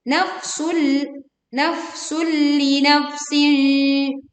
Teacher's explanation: Ini pun menekan ke huruf lam tanpa disertai dengung. Tanwin ini dileburkan ke lam tanpa disertai dengung.